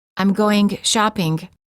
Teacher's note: when you say going shopping, the mistake is that the G is released too much.